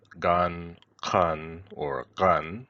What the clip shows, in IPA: qan, gan, or ɢan